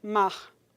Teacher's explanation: esse R que aparece ao final de mar para certos dialetos, que você escuta, você sente a língua tocando nessa região aqui do palato mole, do véu palatino